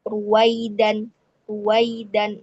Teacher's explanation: Nah, itu kalau ro-nya berharokat dumah baru bibirnya mencucu. Tapi kalau ro-nya berharokat fathah tidak boleh ya.